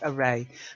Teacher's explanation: it's that schwa at the beginning and then the a at the end. Okay.